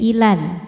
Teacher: Maka jika berhenti panjang ila, berhenti panjang 2 harokat. Kalau diteruskan jadi gugur pemanjangnya, lamnya dibaca pendek, ilal. Namanya takhallus bil hadfi.